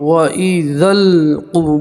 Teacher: قاف کو بھی موٹا پڑھیں گے، را کو بھی موٹا پڑھیں گے